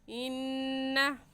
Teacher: यहाँ पर भी नून मुशद्दद है इन्ना में, तो गुन्ना करके पढ़ेंगे। और गुन्ना एक अलिफ की मिकदार, नाक में आवाज़ छुपाने को गुन्ना कहते हैं। ऐसे कहेंगे इन्ना।